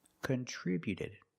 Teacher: the t before the ed is between vowels, so it's a fast d. We don't say contributed.